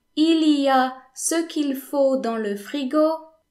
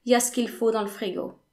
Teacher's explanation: Y'a ce qu'il faut dans le frigo. So, y'a instead of il y a, s instead of ce, and l instead of le.